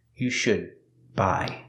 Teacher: The D in should is a stop D, because it's before a consonant.